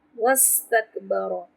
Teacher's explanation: را پہ تفخیم کریں گے، لیکن اس کو جلدی پڑھیں گے، لمبا نہیں کریں گے